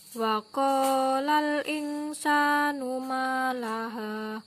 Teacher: sukun bertemu dengan huruf Sin maka dibaca mendengung